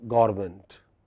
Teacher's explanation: we say gorment, we eat away two or three syllables